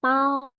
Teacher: 薄 would be like bowing, but second tone